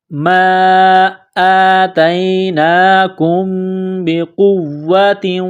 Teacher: میم ساکن کے بعد با ہے تو یہاں پر اقلاب کریں گے، آواز ناک میں چھپائیں گے، غنہ کریں گے۔